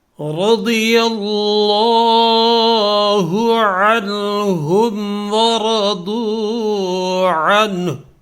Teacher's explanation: رضی ضاد جو ہے یہ پر ہے اور لفظ اللہ بھی پر ہے، اس لیے کہ لفظ اللہ سے پہلے یا کے اوپر زبر ہے تو یہ بھی پر ہے.